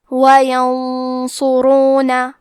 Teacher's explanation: صاد حروف تفخیم میں سے ہے اور غنہ میں اگلے والے حرف کا حکم لیتے ہیں تفخیم میں اور ترقیق میں، تو ہم یہ غنہ کو بھی بھاری آواز میں پڑھیں گے۔ وَيَنصُرُونَ، حرف صاد کو موٹی آواز میں پڑھنا ہے، آخری میں را پہ پیش ہے تو یہاں را کا حکم ہے تفخیم، تو ہم حرف را کو بھی موٹی آواز میں پڑھیں گے۔